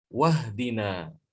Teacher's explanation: Ihdina bacanya ihdina. Tapi kalau dia dibaca dengan lafaz sebelumnya, hamzah wasolnya hilang. Wahdina.